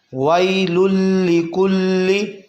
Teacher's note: یہ ادغام کا قاعدہ ہے لیکن اس پہ گنہ نہیں کیا جائے گا کیونکہ لام اور را میں گنہ نہیں ہوتا